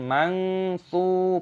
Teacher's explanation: Nun sukun bertemu dengan tsa, ini dibaca sebagai ikhfa, kita mengaburkannya